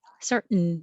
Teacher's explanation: your tongue goes up to the T, which is the same as the N position, and hold it there